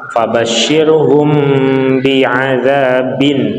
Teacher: ada mim sukun bertemu dengan ba. Hukumnya namanya ikhfa syafawi, artinya kita menyamarkan atau kita memasukkan, jangan sampai fabashshirhum bi, tetapi kita tahan dua harokat.